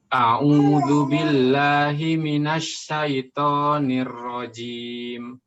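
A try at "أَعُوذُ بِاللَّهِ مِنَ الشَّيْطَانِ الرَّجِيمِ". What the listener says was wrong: Minasyaito, tebalkan to-nya. Ainnya juga jelaskan lagi. A'udzu billah. Ainnya dijelaskan lagi. A'udzu billahi minasyaitonir rajim.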